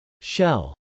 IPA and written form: ʃˈɛl (shell)